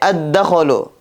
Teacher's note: Бул сөздө лам тыбышы окулбай калды. Себеби качан лам тыбышынан кийин идгам шамсия тыбыштары келген учурда лам тыбышы окулбай калат